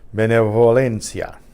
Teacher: The V happens to be intervocalic, so it's more like just a buzz.